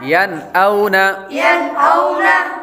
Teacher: हमने गुन्ना इसलिए नहीं किया क्योंकि नून साकिन के बाद हमज़ा हुरूफ़े हल्क़ी में से आ रहा है।